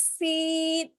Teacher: دیکھیے سین ہم کھینچ کے پڑھنا ہے سیٹی کی آواز کے ساتھ